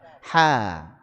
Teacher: Kemudian kita tipiskan karena punya sifat istifal dan infitah.